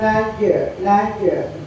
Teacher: jim sukun termasuk huruf kol-kolanya sugro karena ada di tengah kalimat